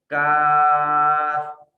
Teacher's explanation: قاف کے مخرج سے تھوڑا سا ہم آگے آئیں گے تو یہاں سے ادا ہوتا ہے کاف